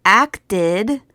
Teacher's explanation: in the verb acted the Ed sounds like ID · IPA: /ɪd/